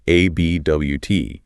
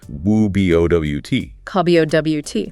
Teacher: the stress is firmly on the second syllable, B-O-W-T. Therefore, the initial A is unstressed, and it collapses to the schwa. It becomes woo-B-O-W-T.